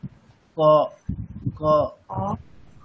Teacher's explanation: দেখুন ক, হ্যাঁ, মানে আমাদের একেবারে ওই উপরের যে মানে একেবারে কি বলবো, উপরের যে তালু আছে, তালুর একেবারে ভিতরের অংশে, মানে তালুর একে উপরের যে তালুর যে স্তরটা রয়েছে, স্তরের একেবারে ভিতরের দিকে কি হচ্ছে আমাদের ওই জিভের ভিতরের দিকের অংশ এবং তালুর উপরের দিকের ভিতরের অংশ পুরোপুরি স্পর্শ করছে